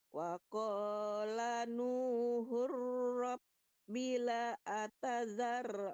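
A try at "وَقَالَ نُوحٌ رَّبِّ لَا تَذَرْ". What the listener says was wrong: Bukan lazar tapi lanya panjang Bu. Alifnya tidak ada harakatnya jadi panjang lanya.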